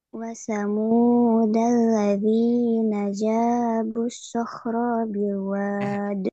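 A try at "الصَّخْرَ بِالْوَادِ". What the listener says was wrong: Masih dibaca panjang. Ro-nya pendek. Robil.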